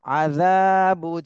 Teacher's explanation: জালে এক আলিফ টান দিতে হবে, জবরের বামে খালি আলিফ মদের হরফ।